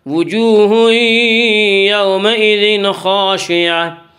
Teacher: وجوہ وا مدہ وہ جو ساکن اس سے پہلے پیش ہو، وا مدہ کو ایک الف کے برابر کھینچ کر پڑھیں گے۔ وجوہ یومئذ، وجوہ یومئذ میں ادغام بالغنہ ہوگا۔